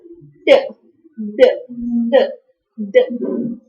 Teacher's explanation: if your tongue touches the alveolar ridge which is back to your upper teeth. So then you produce alveolar sounds